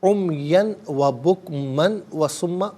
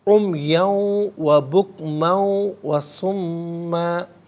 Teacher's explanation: دو زبر کی تنوین کو واو کے ساتھ ملا کر واو کی آواز کو غنّے کے ساتھ ادا کیا جائے گا۔ یہاں یرملون کا جو قاعدہ ہے وہ اپلائی ہوگا۔